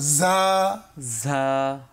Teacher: যা উচ্চারণের সময় যে কাজটি হয় একটা শীষ তৈরি হয় একটা বাতাস তৈরি হয়